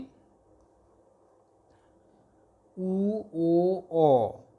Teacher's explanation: উ, ও, অ এই স্বরধ্বনিগুলো উচ্চারণের সময় ওষ্ঠ দুটি কিছুটা গোলাকৃতি বা কুঞ্চিত হয়ে থাকে, কুঞ্চন হয়। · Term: কুঞ্চিত স্বরধ্বনি